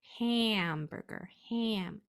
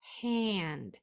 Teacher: can you hear that little nasal Distortion